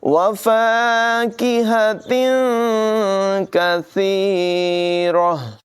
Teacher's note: गोल ता वक़फ़ की सूरत में हा से बदल कर पढ़ा जाता है · यहाँ तनवीन के बाद काफ हुरूफ़ इख़्फ़ा में से है, इख़्फ़ा करेंगे, यानी तनवीन की आवाज़ को ज़ाहिर नहीं करेंगे बल्कि नाक में छुपा कर पढ़ेंगे